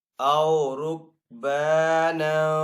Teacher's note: اخفا کر کے یعنی کہ غنہ کر کے ادا کریں گے